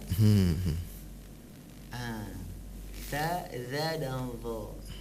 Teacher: 3 huruf ini ujung lidah bertemu dengan ujung gigi atas juga.